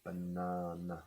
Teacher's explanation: You have two schwas there. Banana. The first one and the last one.